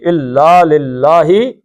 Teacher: لام اس اللہ کا لام باریک پڑھنا ہے کیونکہ پیچھے زیر آ گئی